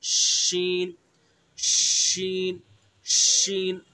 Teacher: शीन, जबान का बीच और उसके मुकाबिल ऊपर का तालु, शीन। शीन को अदा करते हुए मुंह के अंदर हवासी को फैला देंगे, अदा करेंगे शीन, शीन, शीन।